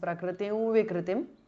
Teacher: Ends in అనుస్వార followed by వ so it becomes ప్రకృతిం వికృతిం ది అనుస్వార changes to the nasal of వ · Prakritim ends in Anuswara followed by Va. So it becomes Prakritim Vikritim. The Anuswara changes to the nasal of Va.